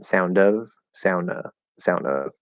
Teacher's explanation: we can connect the d or connect the n